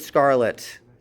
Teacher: It's not aspirated because it's not at the beginning of a syllable.